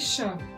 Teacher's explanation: इसको बोलने के लिए तालु का प्रयोग करना है आपको, कि जीवा आपका तालु में जाकर टच हो ऊपर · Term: तालव्य